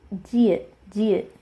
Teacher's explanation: this is a soft J sound, somewhere in between a J and the ch sound. So j or ch, somewhere in between there, jiet.